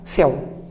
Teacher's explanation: Céu termina em uma estrutura que nós chamamos de ditongo oral aberto.